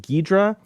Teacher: Technically speaking, the O in the middle of that Ghidorah is very shortened.